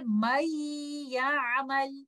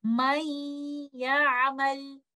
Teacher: But when yanmu letters are coming after noon sakina or tanween, we do the merging along with the gunna. I will merge letter noon with letter ya with the nasal sound. I will hold the nasal sound for some time